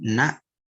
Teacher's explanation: Jadi na ini tuh memiliki gunah. Cuman kadarnya tuh ya angkos paling kurang gitu kadarnya tuh. Secara tidak sadar kita mengucapkan guna kalau benar-benar ya.